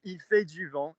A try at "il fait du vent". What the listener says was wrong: No, that went il fait du. The consonants were too big. I still want to hear more than clunk, clunk, clunk, clunk. I want to hear i-a-u-on. Slide.